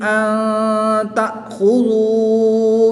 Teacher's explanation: نون ساکن کے بعد تا حرف اخفا میں سے ہے تو یہاں پر اخفا ہوگا، یعنی غنہ زمانی کر کے پڑھیں گے۔ حمزہ ساکن کو ہمیشہ جھٹکا دے کر پڑھتے ہیں، یہاں پر جھٹکا دے کر پڑھیں گے۔